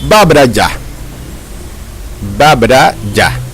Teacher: le mot ba est un ton haut ordinaire